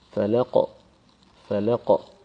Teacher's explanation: the Qaf in the end will have an echo sound